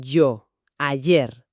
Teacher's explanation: Es palatal sonora. El dorso de la lengua se acerca al paladar duro.